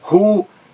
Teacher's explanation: Ruído, está correto também com acento no I. Forma um hiato, o I numa sílaba isolada.